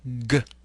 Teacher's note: G place your index and your middle finger on your throat you should feel vibration of the vocal folds when you produce this sound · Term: stop consonant